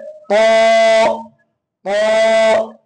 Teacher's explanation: আমাদেরকে ঠোঁট সাধারণভাবে রেখে জিহ্বার আগার পেট এবং সামনের উপরের 2 দাঁতে গোড়ার সঙ্গে লাগাইতে হবে।